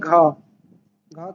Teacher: तो यह कंठ सघोष और महाप्राण व्यंजन है। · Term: घ ध्वनि